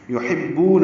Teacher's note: حا وسط حلق سے ادا کریں گے اور با سے ملائیں گے، بو واو مدہ ہے.